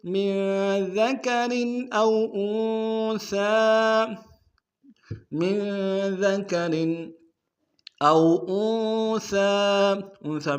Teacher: من ذکر او انثى میں نون ساکن میں غنہ کریں گے